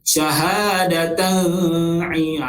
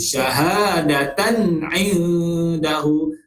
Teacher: Okay, izhar halqi baca dengan terang jelas yang nyata. Tak boleh dengung di antara tanwin dengan ain tu.